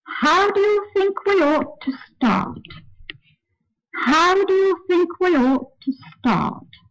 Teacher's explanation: The word ought is said on a slightly lower note, and the sentence continues on that lower note until it gets to the very last syllable.